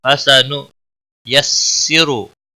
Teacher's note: را کو موٹا پڑھیں گے، پیش کی وجہ سے